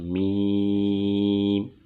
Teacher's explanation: میم کی ادائیگی کی جگہ بند ہونٹوں کے خشک حصے سے میم ادا ہوگا۔ میم، بند ہونٹوں کا خشک حصہ یہ میم کا مخرج ہے، میم کی ادائیگی کی جگہ ہے۔